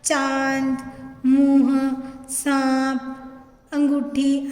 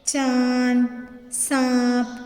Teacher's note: अनुनासिक का उच्चारण मुंह और नाक दोनों से किया जाता है।